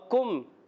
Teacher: کاف ادا ہوتے ہیں زبان کی جڑ تالو کے سخت حصے سے